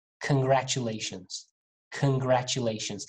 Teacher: The beginning of this word is can, not con